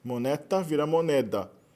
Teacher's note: O T é uma consoante surda. Nas línguas ibéricas ele vira sonora, tanto no português quanto no espanhol.